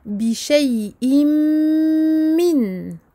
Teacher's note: Ici, il ne s'agit pas ni d'un lem ni d'un ra, il s'agit d'un mime. Donc nous faisons une nasalisation que nous prolongeons très longtemps.